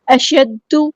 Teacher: دال تشدید والا ہے تو ایک بار ساکن کر کے اس کی حرکت کے مطابق ادا کرنا ہے